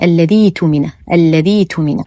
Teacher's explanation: فلا ينطقون همزة القطع، وإنما يقولون الذي اؤتمن، الذي اؤتمن، فيبدلونها بياء ساكنة حال الوصل